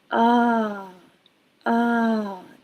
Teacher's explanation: This is how all stressed American vowels sound. They have two tones. They're wavy. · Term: wavy sound